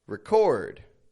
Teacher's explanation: the difference is that the verb is stressed on the second syllable the noun however is stressed on the first syllable record record